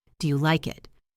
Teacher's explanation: Listen to my voice on the word it. It goes up. Do you like it? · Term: rising intonation